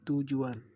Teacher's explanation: Kecuali bunyi labial, bunyi bahasa dapat disertai labialisasi. Misalnya bunyi T pada kata tujuan terdengar sebagai bunyi TW atau dilabialisasi.